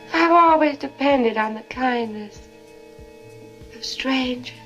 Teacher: you hear how there's no r in strangers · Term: non-rhotic accent